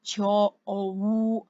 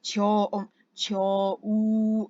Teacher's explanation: the wu you need to pronounce. It's a separate syllable. You need to pronounce a bit longer. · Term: long pronunciation